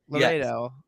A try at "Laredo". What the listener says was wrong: No, not like Larry. Laredo. It's Mexican or Spanish or South American.